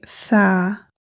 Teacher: Thaa is produced by the tip of the tongue touches between the upper and lower front teeth, and air comes out with the voice. Release the tongue and say Thaa, and the example word, in think.